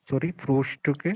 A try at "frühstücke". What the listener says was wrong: Ja, sehr gut.